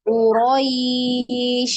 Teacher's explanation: harus mengalir huruf syinnya ketika disukun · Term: dialirkan